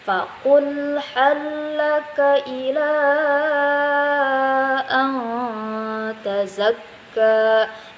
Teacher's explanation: mad asli bertemu dengan hamzah atau alif di lain kalimat. Nah, jadi bacaannya itu bisa 2 harokat atau 5 harokat. Nah, tapi kebanyakannya orang mengambil yang 5 harokat.